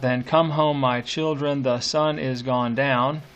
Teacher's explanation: you can hear that that sort of rollicking beat of the anapest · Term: anapestic beat